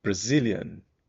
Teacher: Bom, então o do Brasil vai ser o mesmo, aquele sem vontade. Zillion, aqui o Zil vai ser o forte também